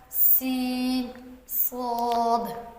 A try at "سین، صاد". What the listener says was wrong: سین کی لمبائی پوری نہیں کی۔ سین، صاد، پھر سے دہرائیں۔